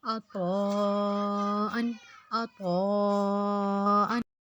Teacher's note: عین زبر، عین زبر آ، طا زبر الف مد طا، حمزہ 2 زر ان، عطاءً، عطاءً۔ عین کو ہم نے حلق سے نکالنا ہے، طا کو ہم نے موٹا کرنا ہے، اور حمزہ کو ہم نے تنوین کرنا ہے۔